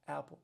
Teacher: And the makhraj of hamza, the point of articulation, is the throat. So at the bottom of the throat.